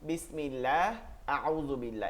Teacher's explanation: থাকলে আল্লাহ শব্দকে মোটা করে পড়তে হয় যেমন আল্লাহু আকবার আস্তাগফিরুল্লাহ আল্লাহ শব্দের তাসদিদের ডানে জের থাকলে পাতলা করে পড়তে হয়